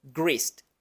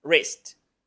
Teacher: la W no tiene sonido solamente se pronuncia la r